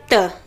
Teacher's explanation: त बोलते तो अपनी जो जिह्वा है ना वो अपने दांतों को स्पर्श करती है।